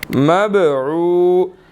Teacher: با ساکن ہے، قلقلہ کریں گے